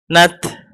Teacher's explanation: Tetap makhrajnya ta, ujung lidah digusi, tapi ada sedikit udara yang keluar setelah matinya gitu. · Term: tak sukun hamas